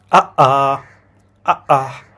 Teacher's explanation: বাতাসটা একটু থেমে তারপর আসে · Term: গ্লোটাল স্টপ